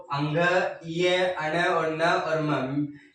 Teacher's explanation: इनकी उच्चारण नाक और मुख में से हवा जब बाहर निकलती है तब इनका उच्चारण होता है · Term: नासिक वर्ण